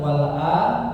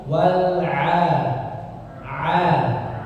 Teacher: Wal 'a jangan jadi hamzah ya, jangan wal a, bukan wal a tapi wal 'a.